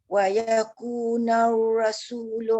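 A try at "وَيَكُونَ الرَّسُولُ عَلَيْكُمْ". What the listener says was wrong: Ra tebal sikit. Wa yakuna narra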